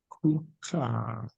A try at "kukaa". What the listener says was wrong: kukaa. Kukaa. Because it's a double A. So you lengthen it. You say kukaa. It's a double A. Kukaa.